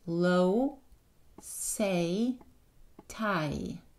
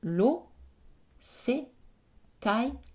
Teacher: ma bouche ne change pas de forme quand je produis la voyelle.